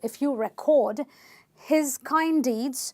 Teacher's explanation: If you record, this is a verb. So you're stressing syllable number 2.